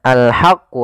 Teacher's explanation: ha kecil dibaca dengan ha alirkan nafas